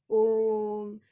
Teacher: संस्कृत में जैसे कोई श्लोक बोलते हैं या इस तरह से आपने कभी देखा होगा मंत्र में या श्लोक में, ओम, यहाँ पर ये 3 जैसा दिख रहा है, ये इसका चिन्ह है, सिंबल है, इसीलिए इसको हम जान सकते हैं। ओ थोड़ा सा लंबा गया, 3 गुना लंबा गया ह्रस्व स्वर से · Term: प्लुप्त स्वर